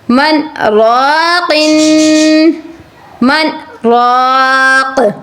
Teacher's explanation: اسی سانس میں آپ نے ان دونوں لفظوں کو پڑھنا ہے. صرف تھوڑی سی خاموشی کے بعد آپ نے دوسرے لفظ کو ادا کرنا ہے جس کو سکتہ کرنا کہتے ہیں